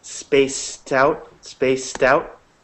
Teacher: couple of you had this problem when you say spaced out make sure to hit that soft kind of DT sound at the end of space